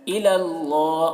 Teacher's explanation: اللہ کلام سے پہلے زبر ہے تو اللہ کلام کو پر پڑھیں گے